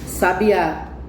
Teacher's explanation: Quando a sílaba mais forte for a última, que é no caso da palavra sabiá, a palavra ela é oxítona.